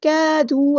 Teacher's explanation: گے، كادوا الف مد آ گیا تو مد اصلی کریں گے، اور جو الف ہے اس کو ہم لائٹ پڑھیں گے